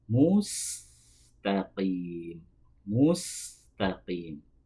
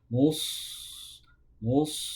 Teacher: meskipun keduanya itu tempat keluarnya sama, tapi yang membedakan dua huruf itu adalah sifatnya. Sin itu tipis, sedangkan shad itu tebal.